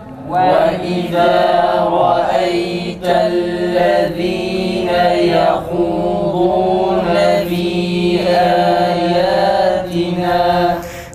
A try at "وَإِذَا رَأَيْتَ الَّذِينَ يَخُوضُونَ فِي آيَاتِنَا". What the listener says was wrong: Meddi münfasılı biraz daha uzatalım.